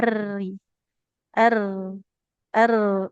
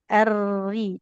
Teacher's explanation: Nah, jadi huruf ro itu getarnya sedikit aja.